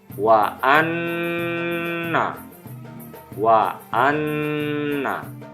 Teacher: Nun bertanda tasjid dibaca dengung ditahan minimal dua harokat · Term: gunnah